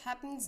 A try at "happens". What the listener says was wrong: Okay, and also on happens, I have a feeling this is a Germanism here of the vowel before the double letters is getting overly reduced, which is something that would happen in German.